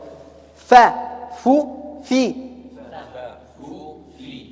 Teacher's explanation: يخرج من بطن الشفة السفلى مع أطراف الثنايا العليا